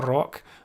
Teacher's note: When you say rock, it's that CK at the end, which is the power in that word, rock. And if you're Scottish, you've got that rolling R at the start as well, rock. But the lowercase K just didn't want to say stand out, because it doesn't actually.